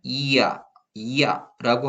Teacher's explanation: 반모음 이에 단모음 아가 결합해서 이야. 이 연달아 발음하면 이야, 이야라고 하는 소리가 되죠. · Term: 이중모음